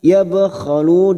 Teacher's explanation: bak sukun qalqalah sugra yang mati asli di tengah kalimat, jangan lupa dipantulkan